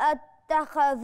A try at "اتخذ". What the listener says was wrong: مش عايزه التفخيم بتاع الخ يدخل على الذال فتضيع لي في النطق